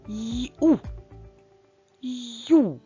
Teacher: перший звук й це М'який приголосний звук а далі за ним іде одразу голосний у Ось такі два звуки разом на письмі позначаються бук буквою ю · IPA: [йу]